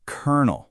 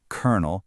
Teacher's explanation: The O sound turns into an sound. And somehow that second L decides it wants to be an R